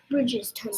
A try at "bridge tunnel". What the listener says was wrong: not bridges, bridge tunnel. Good.